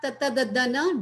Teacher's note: Then you have Tata Dadana, dental. They use your teeth with your tongue.